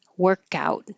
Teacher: The noun has stress on the first syllable.